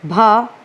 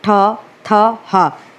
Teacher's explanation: जबकि हम भा बोल रहे हैं तो हमारे ओंठ आपस में स्पर्श कर रहे हैं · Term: ओष्ठ